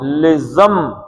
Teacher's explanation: نون کے بعد بے آ گیا، لہذا اس نون کو کیا پڑھیں گے؟ میم پڑھیں گے.